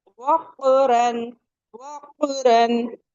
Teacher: एकदम लास्ट से, जो रूट ऑफ द टंग थी, वहां से हमारा कॉफ अदा होता है। और आपको यूविला दिखाया था ना, एकदम बस यूविला के आगे से निकलता है हमारा कॉफ।